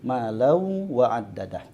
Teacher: sekalipun di situ ada tasydid pada huruf waw, maka tetap, ya, harus membawa suara dengung daripada huruf nun sukun atau tanwin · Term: idgham bi gunnah